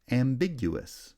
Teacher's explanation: ambiguous has secondary stress on the first syllable primary stress on the second syllable